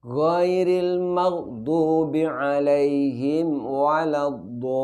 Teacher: jangan sampai mim sukunnya idgham atau lebur ke huruf wawu.